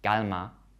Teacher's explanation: there is far less air coming out these are unaspirated